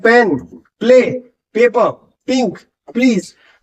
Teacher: पी के बाद आपको लिप्स बंद होते हैं तो उनको खोलने के लिए आपको अपने होठों को खोलना पड़ता है